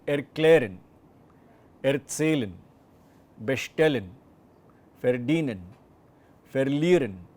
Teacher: we are actually not emphasizing the prefix, but what comes after that, that is the verb, or well, the verb part of it.